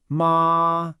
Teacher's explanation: The first tone is high and flat, kind of like you're holding a note.